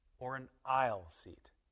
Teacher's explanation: We use falling intonation on the last alternative, the choice after the word or.